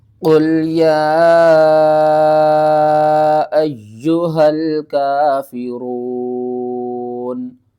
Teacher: قاف کو پر پڑھنا ہے اور قاف کو لام کے ساتھ ملا کر پڑھنا ہے